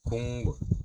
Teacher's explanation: 국물의 경우 기역이 뒤의 미음을 영향을 받아 이응으로 바뀝니다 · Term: 비음화